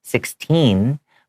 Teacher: I have that n Sound at the end and that t is hard